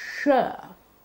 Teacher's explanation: sure is a voiceless palatal velar fricative